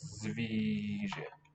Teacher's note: Zví is accented because it's long.